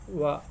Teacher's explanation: दंत प्लस ओष्ठ बराबर दंतोष्ठ, दंतोष्ठ में व भी आएगा